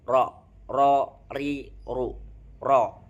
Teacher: ujung sisi lidah dengan rongga atas setelah huruf nun adalah tempat keluarnya huruf ro.